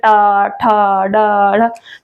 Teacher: ये मूर्धन्य वर्ण हम इन्हें इसलिए बोलते हैं क्योंकि ये जो बोले जाते हैं मूर्धा से बोले जाते हैं। मूर्धा क्या होता है, मूर्धा हमारी जीभ जो होती है उसका पीछे वाला जो हिस्सा होता है तो वो होता है मूर्धा।